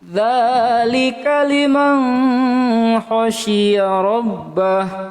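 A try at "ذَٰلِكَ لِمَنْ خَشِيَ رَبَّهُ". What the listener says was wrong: Enggak dengung di situ. Dzalika liman, man tuh dia masukkan di situ langsung khokong, enggak nun, enggak ba ataupun mim. Jadi enggak dengung. Itu ketemu hurufnya, enggak dengung. Situ baca liman khasya rabbah.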